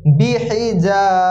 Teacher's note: হা গলার ভিতর থেকে আসবে